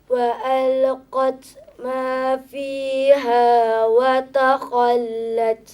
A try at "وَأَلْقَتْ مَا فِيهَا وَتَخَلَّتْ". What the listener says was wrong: Jangan tebalkan huruf yang lain selain daripada kha. وتخلت. وتخلت. Lam tak boleh tebal, ta tak boleh tebal. Yang tebal rasanya huruf apa? Kha. Kerana dia huruf apa? Isti'la.